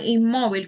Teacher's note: la sílaba tónica es donde se hace la mayor fuerza porque la sílaba tónica es la penúltima sílaba